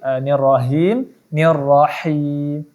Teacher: him dilembutkan lagi angin ha-nya